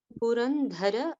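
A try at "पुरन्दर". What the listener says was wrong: Purandara. It is not a Mahaprana. Yes, in few scripts we see it as a Mahaprana. We'll be following as the Alpaprana.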